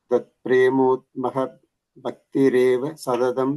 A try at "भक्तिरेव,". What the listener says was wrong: And the bhakti reva, after there is a comma. Okay, there's a pause there. the fourth line, tvat prematmaka. You said a mo there, it's a ma, prematmaka. And bhakti reva, after that there is a comma. Okay, pause.